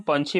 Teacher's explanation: अक्ष का उच्चारण ख चाहे तो छ होला